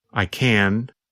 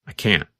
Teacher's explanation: to these examples I can I can't I can I can't when we say the positive form we pronounce the letter N longer the n Sound n n n lasts longer than in the negative form